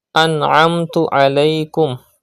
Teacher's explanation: Pronounce ayn from the middle part of your throat.